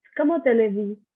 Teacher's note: I am not pronouncing the S at the end.